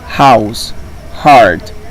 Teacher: the h sound is like the pronunciation of the graphine J in Cuba or Andalusia it means that it is aspirated